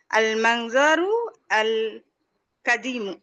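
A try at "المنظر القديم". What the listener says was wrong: আপনি আল আল বলবেন না, একসাথে বলবেন, যেহেতু আমরা এখানে বলছি কাদিমুন কদিম।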